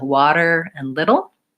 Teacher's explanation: the flap T which is the sound in the middle of words like water and little